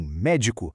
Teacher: E se a intensidade tá na antipenúltima, tipo em médico, aí estamos lidando com uma proparoxítona.